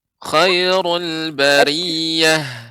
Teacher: tetap menjaga ketika mengucapkan ru tetap tebal.